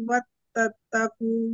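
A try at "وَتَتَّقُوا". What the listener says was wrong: Watattaku, taknya yang double yang belakang. Watattaku.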